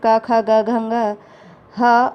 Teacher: इनका उच्चारण स्थान क्या होता है? कंठ होता है, यानी गला, और इसलिए इन्हें कंठ्य वर्ण कहा जाता है।